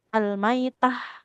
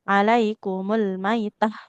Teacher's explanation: ta marbutah jadi ha